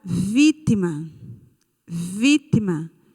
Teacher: a sílaba tônica é vi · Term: proparoxítona